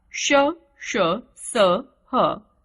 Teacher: इनका उच्चारण करते समय हवा मुंह में अत्यधिक रगड़ खाने के कारण थोड़ी ऊष्म यानी गर्म हो जाती है, इसलिए इन्हें ऊष्म व्यंजन कहते हैं।